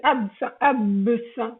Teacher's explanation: la consonne, le S, c'est une consonne sourde et le B, c'est une consonne sonore